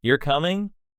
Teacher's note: And for questions, you can often just use a rising intonation